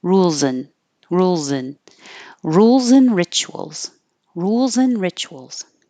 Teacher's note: you're connecting the Z from rules and then you're dropping the D an and and you're changing the ah to an uh so